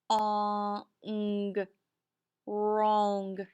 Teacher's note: We have ghost digraph, WR. We do not hear the W sound, so we mark it out. We have digraph NG, so we underline it.